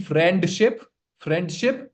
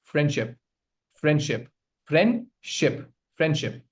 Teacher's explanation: the T or the D sound. It is dropped between two consonants.